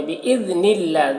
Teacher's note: دال کو باریک پڑھنا ہے اور اللہ کے لام کو باریک پڑھیں گے